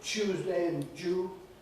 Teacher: ‘Tuesday’ [ˈtjuːzdeɪ] and ‘due’ [djuː] being pronounced as [ˈʧuːzdeɪ] and [ʤuː] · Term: coalescence